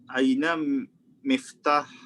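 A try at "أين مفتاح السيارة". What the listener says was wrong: Aina miftahus sayyarati. Ahsan.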